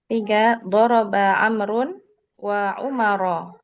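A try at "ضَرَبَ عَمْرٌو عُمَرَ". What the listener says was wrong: Enggak, jangan dibaca wa.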